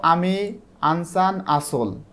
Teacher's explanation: আযুক্ত স্বরধ্বনি উচ্চারণের সময় জিভটা নিচু থাকে, যেমন আমি, মানে জিভটা একটু নিচের দিকে যাবে, আমি, এবং এইটা মাঝখানের দিকে থাকে, মানে সামনেও যায় না পেছনেও যায় না, এটা মাঝে থাকে এবং ঠোঁটটা প্রসারিত হয় এবং ঠোঁট বেশি খোলে।